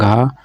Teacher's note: घा का उच्चारण स्थान कंठ हो जाएगा